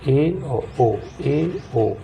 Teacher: अर्ध संवृत में मुंह आधा सा खुलता है।